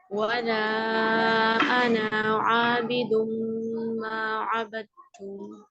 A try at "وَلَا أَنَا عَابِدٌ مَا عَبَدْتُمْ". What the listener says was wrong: ولا انا. یہ یہاں پہ نون کو ہم نے کھینچنا نہیں ہے. ٹھیک ہے مدنی ہو رہی یہاں پر خالی انا کیونکہ یہ ایکسیپشنل ورڈ ہے. یہ جہاں پہ بھی قرآن میں انا کا لفظ آئے گا انا کا مطلب ہوتا ہے میں. تو یہ یہاں پہ مدہ نہیں ہوتا.